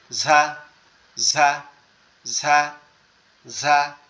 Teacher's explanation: এই র আর ঝা, রটা হচ্ছে জিহ্বার আগার উল্টা পিঠ দিয়ে উচ্চারণ হবে, আর ঝাটা হচ্ছে আমাদের জিহ্বার আগা এই নিচের দাঁতের সামনে লাগবে, এই যে নিচের দাঁত আছে এটার উপরে লাগবে এইখানে, ঝা।